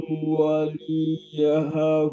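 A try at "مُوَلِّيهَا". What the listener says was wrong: muwalliha, tasydid di atas lam. Huwa muwalliha.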